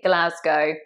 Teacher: It's actually Glasgow. It's a nice soft O, not an ow.